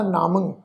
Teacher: मम्मे उत्ते टिप्पी की मात्रा, नासक उच्चारण होएगा नामं